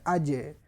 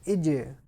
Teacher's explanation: you need echo at the end of sound of Jim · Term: Qalqala